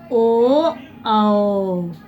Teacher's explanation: ओ का भी उच्चारण है कंठ से हमारा हो, लेकिन हमारा होठ भी जो है मूवमेंट कर रहा है। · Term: कंठोष्ठ